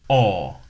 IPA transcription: ɒ